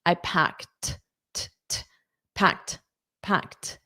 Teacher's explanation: this e d is pronounced as a t. I packed t packed. · So this one, this packed, notice this ED is pronounced as a T.